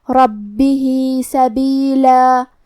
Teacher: کلمت ربہ، ہا کے نیچے کھڑی زیر ہے تو یہاں مد صلہ صغرا ہوا، ہم اپنی آواز 2 مد کے برابر لمبی کریں گے